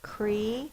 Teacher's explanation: that's an open syllable, the vowel is long